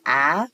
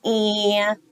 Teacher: when A is next to his friend N, he becomes whiny. He doesn't say the regular short A sound like ah. He says eh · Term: whiny A